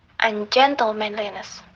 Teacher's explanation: The rhythmic principle is that while it is possible for English word to end with as many as 4 unstressed syllables, for example, ungentlemanliness. So here after the stressed gen, there are 4 unstressed syllables